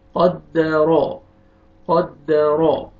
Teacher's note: را کو مر زبر آ رہی ہے، را کو آپ نے موٹا کر کے پڑھنا ہے